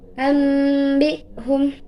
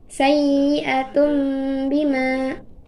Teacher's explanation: Cara membaca iqlab adalah dengan mengubah suara nun mati atau tanwin menjadi mim. Kedua bibir dirapatkan untuk mengeluarkan bunyi dengan dibarengi dengung. atau sengau yang keluar dari pangkal hidung.